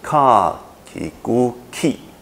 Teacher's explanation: 送气保持送气，子音还是科的哈，还是保持科的音